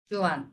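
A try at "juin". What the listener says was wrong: জুয়া জুয়া নো এন উচ্চারণ হয় না আই আর এটা একটা রুল বলে দেই এটা সামনে আমরা কোথাও না কোথাও পাবো এই রুলটা হচ্ছে আই এবং এন একসাথে থাকলে সেটা আকার হয়ে যায় একটা আকার সিম্পল একটা আকার হ্যাঁ আকার বাংলায় আকার বুঝতে পারছেন কি আমার কথাটা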